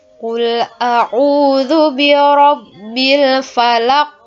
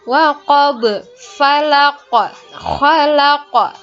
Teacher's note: Nah, ingat pantulannya lebih besar daripada qalqalah sugra. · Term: qalqalah kubra